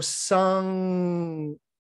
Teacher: notice that it's way in the back of the throat when you go sung but the n part of it your tongue is actually pushed